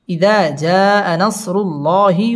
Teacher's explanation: আল্লাহ শব্দের লাম পুর হবে এবং ল এক আলিফ টেনে পড়তে হবে